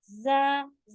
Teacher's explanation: जा में buzzing sound भी होती है